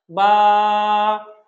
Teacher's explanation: বা এবং এক আলিফ টানবো বা হরুফটাকে আমরা এক আলিফ টানবো ঠোঁটের ভিজা অংশ থেকে বলব এবং এক আলিফ আলিফ টেনে বলবো · বা, আমাদের ঠোঁটে ২ টা অংশ আছে, একটা ভিজা অংশ, একটা শুকনো অংশ। তো বা হরফটা যখন আমরা বলবো তখন ঠোঁটের যে ভিজা অংশটা বা ভিতরের যে অংশটা সে অংশ থেকে বলবো খুব সহজে।